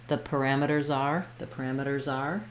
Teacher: you can really hear that Z in that case because I link it and it's almost like the word R starts with the Z